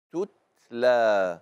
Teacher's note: مخرج التاء من طرف اللسان